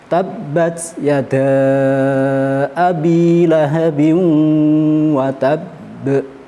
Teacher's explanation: Untuk lahabi watab itu ada tanwin bertemu dengan wawu, maka menurut ilmu tajwid tanwinnya masuk ke wawu disertai dengung, biasa disebut dengan idgham bihunna.